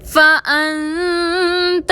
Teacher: فَأَنْتَ میں نون ساکن میں اخفا کریں گے